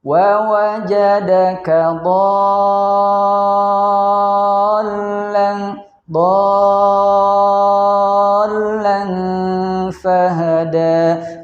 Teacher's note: kita baca dulu panjang huruf dotnya 6 harokat, kemudian baru masuk kepada huruf lam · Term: mad lazim mutsaqal kalimi